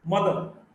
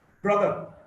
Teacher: A central, near half open, neutral short vowel is also known as schwa.